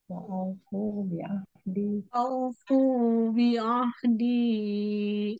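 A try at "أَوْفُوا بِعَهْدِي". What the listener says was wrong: Nah, hati-hati kepanjangan di berapa harokat tuh? Di 4 harokat. Wa aufu bi'ahdi. Nah, sedikit saja.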